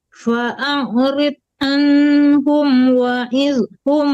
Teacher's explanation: tebalkan dotnya tapi tidak boleh ada pantulan